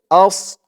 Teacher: বললে কিন্তু সদের জায়গায় সিনের উচ্চারণ চলে আসবে বলতে হবে আস মুখটা একটু ভরপুর হয়ে যাবে সদের উচ্চারণ করার সময়